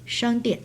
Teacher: first tone on A, then falling tone still on A for the next syllable, for the second syllable.